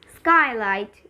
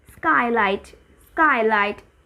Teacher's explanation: Then SP or SK is not aspirated.